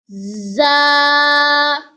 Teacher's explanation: Za comes from tip of the tongue, touches the front lower teeth to pronounce za.